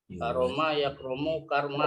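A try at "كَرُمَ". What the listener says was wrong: Karuma Pak ya, jangan karoma. Karuma. Ya beda.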